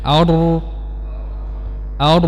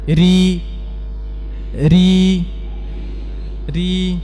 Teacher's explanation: Adapun R yang tipis Tidak tengah lidahnya rata dan pangkal lidahnya dia tidak meninggi